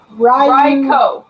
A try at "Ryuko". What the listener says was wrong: Ryuko. No, there's a U there. Ryuko.